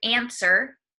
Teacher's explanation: So for example, the word answer, A-N-S-W-E-R. When we say answer, we do not pronounce the W. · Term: silent